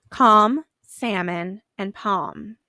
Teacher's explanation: in these words you hear mmm at the end of words but you don't hear the L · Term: silent